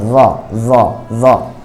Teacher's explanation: হামজা জ জবর আজ, জ হরফ এর উচ্চারণও নরম, জিহ্বার আগা থেকে সামনের উপরে দুই দাঁতের আগা এর সাথে লাগবে